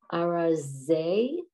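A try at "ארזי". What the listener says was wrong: Oh, Arze. I thought you said it with an H for some reason.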